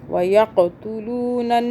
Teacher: काफ पे कलकला यानी कि झटका देंगे। वयक़तुलूनन, नून मुशद्दद आ रहा है, यहाँ पे हम गुन्ना करेंगे 2 सेकंड का।